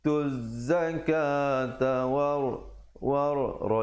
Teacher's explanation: war ra di situ menjadi tebal.